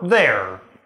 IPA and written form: ðɛɹ (there)